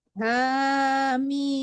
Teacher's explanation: Ha itu 2 harkat ya, tapi nggak ada dengungnya di situ karena mimnya tidak tasdid ya.